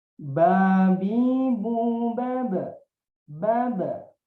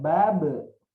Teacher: saya ulangi di sini bacanya ba-nya sukun, ada sifat qalqalah